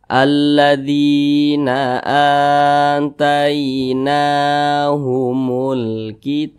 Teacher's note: huruf nun juga dibaca panjang namanya Mad Thobi'i panjangnya dua harakat atau kira-kira dua ketukan